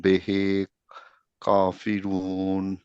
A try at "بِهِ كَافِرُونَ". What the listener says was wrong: বেহে না, বিহি।